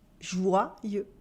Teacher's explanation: Here, the Y sounds like two I. As in, joyeux, remember, with the vowel sound wa at the beginning.